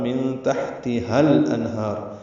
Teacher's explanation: من تحتها الانہار، ہا کو لام سے ملا دیں گے، اظہار قمری ہوگا، نون ساکن پہ اظہار حلقی ہے، آگے ہا آ رہا ہے، ہا کو 2 حرکات لمبا کرنا ہے.